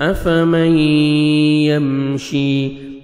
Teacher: میم ساکن کا اظہار ہے، جلدی پڑھیں گی۔ شین کو کھینچیں گے، یا مد ہے 1 سیکنڈ آپ نے کھینچنا ہے شین کو، یا ساکن سے پہلے زیر ہے۔